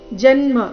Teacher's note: ಜನ್ಮ ಜ ಮೇಲೆ ಆಘಾತ